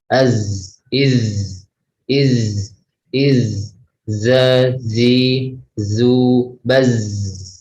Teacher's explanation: Jadi karena sifatnya zal ini dia sifatnya rikhwah, itu mengalir ketika diucapkan. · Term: huruf zal